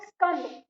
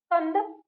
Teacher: आपको क्या करना है, ना तो ई लगाना है, ना पूरी तरह से स बोलना है, और ना आ लगाना है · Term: आधा स